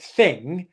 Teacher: in standard British English the kind you see in the dictionary you do not pronounce the G sound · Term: NG sound